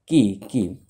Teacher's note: কাফটা হচ্ছে 5 নম্বর মাখরাজ, জিব্বার গোড়া থেকে একটু আগে বাড়াইয়া, মানে যে জিব্বার গোড়াটা আছে মনে করেন এটা জিব্বার গোড়া, তার সামনে থেকে একটু আগে বাড়াইয়া ঠিক তার বরাবর উপরে তালুর সঙ্গে লাগাইয়া কাফ, শেষে আবার ফা আছে, কাফ।